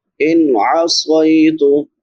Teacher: نون ساکن پہ اظہار ہوگا کیونکہ بعد میں حروف حلقی میں سے عین ہے